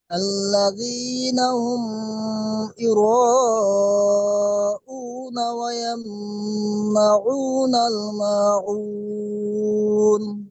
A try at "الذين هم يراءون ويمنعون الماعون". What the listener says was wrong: জি আপনি এখানে গুণনা করলেন এবং এখানেও গুণনা করলেন, এখানে গুণনা হবে না, বুঝতে পারছেন?